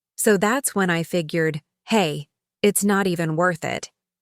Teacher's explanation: The pitch of his voice went up and down like he was singing.